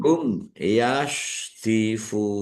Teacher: mim sukun bertemu dengan huruf iya, bacaan idhar safawi, dibaca jelas. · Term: izhar syafawi